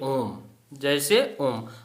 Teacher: प्लुप्त स्वर 3 मात्रा काल का समय या ज्यादा काल का समय